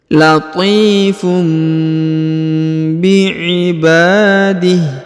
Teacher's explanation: Huruf tanwin harokat un bertemu dengan ba, maka huruf unnya berubah menjadi mim ya.